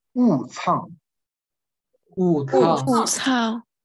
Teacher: 你就读雾，而且要读高调啊，所以是雾仓啊